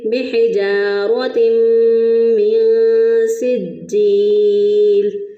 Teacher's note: تا کو میم کے ساتھ ملائیں گے بھی، اور اس کے ساتھ ساتھ ہم گنہ بھی کریں گے، ناک میں آواز بھی لے کے جائیں گے۔ تو ہم اس کو پڑھیں گے بحجارۃ من سجیل۔ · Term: ادغام مع الغنہ